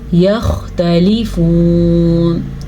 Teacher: خا کو پر پڑھیں گے کیونکہ یہ والا خا حروف مستعلیہ میں سے ہے